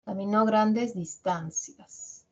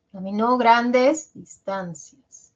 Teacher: Mira distancias ahí el tono bajado ha bajado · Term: descendente en cadencia